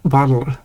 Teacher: some dialects pronounce it more like a tapped R